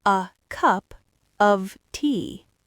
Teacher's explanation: The content words are cup and tea. Those are the peaks. The function words are a and of.